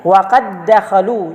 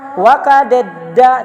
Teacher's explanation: Tidak bisa dibaca waqadadda, yang da-nya tidak dibaca satunya, langsung dimasukkan. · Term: idgham mutamasilain